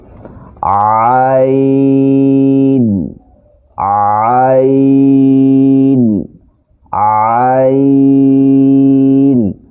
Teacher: معزز سامعین، اب جو ہم لفظ ادا کرنے جا رہے ہیں، یہ حروف حلقی میں سے ہے، یعنی حلق میں سے نکلتا ہے۔ جب ہم اس کو ادا کریں گے تو حلق کے درمیان سے یہ لفظ ادا کریں گے۔